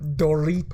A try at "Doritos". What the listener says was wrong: You gotta roll the R. You have to roll the R.